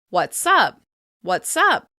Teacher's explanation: In the common greeting, what's up, you can hear that the s sound connects to the word that follows. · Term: catenation